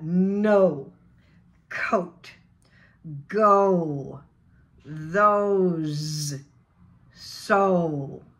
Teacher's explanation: o becomes oh oh begin with your jaw tongue alone forward lips are rounded o o it resonates at the back of the throat